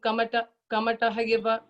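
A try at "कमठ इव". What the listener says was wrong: Ha illa. Ha illa, just kamata iva padan.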